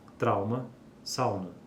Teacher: né nos informando que existe uma variação dialetal nesse sentido quando quando o ditongo decrescente seguido de consoante nasal termina em u a nasalização não ocorre em nenhum dialeto